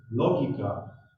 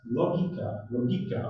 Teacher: pronounced with an accent on the vowel O